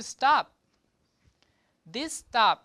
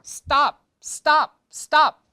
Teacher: this t has no h meaning has no puff of air. So, it's a little bit different from this T, meaning the T without the air, but still it's a T. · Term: unaspirated T